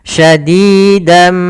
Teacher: yaitu bacaan syadidan tapi karena bertemu setelahnya huruf mim tasdid maka suara dannya masuk kepada huruf mim sehingga suara nunnya hilang berubah menjadi suara mim sambil kita tahan hukum bacaannya Idam bunah oke Ya syadidam sambil ditahan gunahnya yaitu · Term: idgham